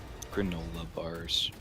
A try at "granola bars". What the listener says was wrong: you're pronouncing it weird granola you were saying like grandola bars granola bars why you putting a D in it